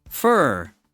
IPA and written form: fɝ (fur)